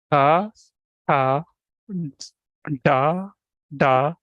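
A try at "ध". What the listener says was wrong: this is not da, dha. Not dha. Say dha. Dha, not da. Dha. Dha.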